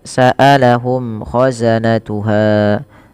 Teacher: Ja ja ji ju faujun faujun saalahum sambil ditahan ngnya dua harakat kemudian saalahum khazanatuha mim mati bertemu k ada izhar syafawi dibaca dengan jelas suara mimnya · Mim mati bertemu kha, ada izhar syafawi dibaca dengan jelas suara mimnya tidak ada tembel-tembel penahanan.